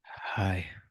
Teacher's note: that was weird it was very breathy very breathy